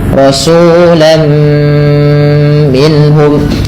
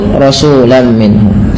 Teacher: Langkah kedua, karena ia bi gunnah disertai dengan gunnah, maka perlu ada penahanannya.